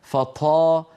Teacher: ايضا فالطاء الفصيحه طاء مجهوره شديده هكذا ولا يصح ان نقول هل سمعتم النفس الذي بعد الطاء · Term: طاء مهموسه